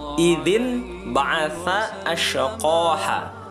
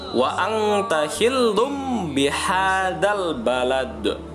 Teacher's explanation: N-nya bunyi N diganti menjadi bunyi M ketika nun mati atau tanwin bertemu dengan huruf ba. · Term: iklab